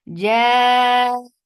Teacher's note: it is mad muttasil wajib. So make it 4 counts long